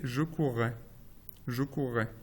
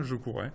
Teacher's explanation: vous avez soit une géminée qui est prononcée, soit, chez certains, je courrais. Une consonne simple.